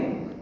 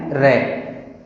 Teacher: जीभ में कंपन होगा, जीभ वायु मार्ग को रोक लेगी और हवा लुढ़कती हुई मुंह से बाहर आएगी। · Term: प्रकंपित